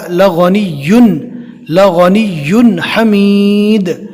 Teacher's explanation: یہاں پر 2 پیش کی تنوین کو ہم نے ظاہر کر کے پڑھا